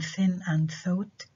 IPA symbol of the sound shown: θ